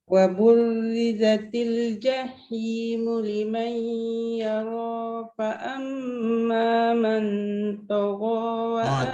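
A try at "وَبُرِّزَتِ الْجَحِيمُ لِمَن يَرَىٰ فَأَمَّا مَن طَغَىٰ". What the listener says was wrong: Tebalkan sikit. Tebalkan sikit dengung bertemu dengan huruf isti'la ni. Fa amma man tagha.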